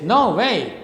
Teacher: no way so now is trust and wave is also stressed both syllables are stressed at the same time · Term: spondee